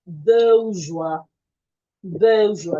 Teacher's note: You're stressing the first syllable. It's just in the first syllable.